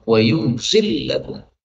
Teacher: Kemudian, pada ayat yang ke-13, wa yunazzilu boleh dibaca wa yunzilu. Dan karena lam ketemu lam, maka boleh idgham